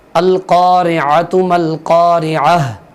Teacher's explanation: عین کو جس طرح کہ ہم نے پہلے سبقوں میں یاد کیا ہے، عین کو ہم نے حلق سے نکالنا ہے